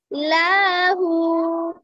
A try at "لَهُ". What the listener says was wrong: লাহু। লাতে টান দিলেন কেন? লামতে টান দিলেন কেন? বলেন কেন টান দিলেন? লামে কি টান আছে? টান আছে না? তাহলে টান দিলেন কেন? লাম জবল্লা হাউলটা পেশ হু, লাহু, লাহু, লাহু, লাহু, এভাবে বলতে হবে।